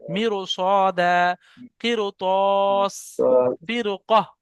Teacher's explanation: র পুর হবে অর্থাৎ মুখ গোল হবে।